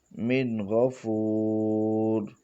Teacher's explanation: یہاں بھی نون ساکن کے بعد حروف حلقی میں سے غین ہے، اس لیے یہاں پر بھی غنہ نہیں ہوا اور اظہار ہوا ہے